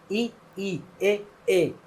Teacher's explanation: जीभ आगे जोर लगा रही है।